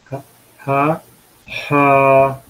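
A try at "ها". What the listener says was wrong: Long sound হচ্ছে কেন? Sound ঠিক আছে, লং সাউন্ড হবে না।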